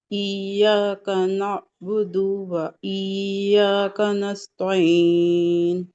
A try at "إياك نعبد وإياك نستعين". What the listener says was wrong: ہاں اب آپ نے کیا کیا، تھوڑا سا رک کے پڑھا اس کو، रुक के, ठहर के, नाबुदु व इय्याका, ऐसे ठहरना भी नहीं है, एक साथ पढ़ना है। इय्याका नअबुदु व इय्याका नस्तईन।